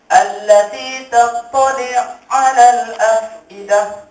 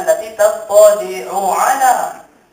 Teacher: Ada dalam kabilah A itu dia susah nak sebut bila huruf yang sama tu bertemu. Maka dia kena idgham, kena masukkan ain pertama ke dalam ain yang kedua, maka jadilah allati tattali' 'ala al-afidah.